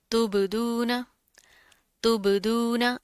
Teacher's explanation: बा के ऊपर जज्म आ गया है, कलकला करेंगे